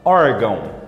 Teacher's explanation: Vai da vogal forte para semivogal fraca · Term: ditongo nasal decrescente